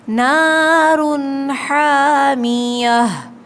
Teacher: رن پہ غنّہ نہیں کیا ہم نے